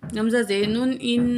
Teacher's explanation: गुन्ना नाक में आवाज़ ले जाकर ठहराने को बोलते हैं।